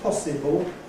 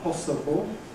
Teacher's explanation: the older pronunciation ‘possible’ [ ˈpɒsɪbl̩ ] is increasingly replaced by [ ˈpɒsəbl̩ ]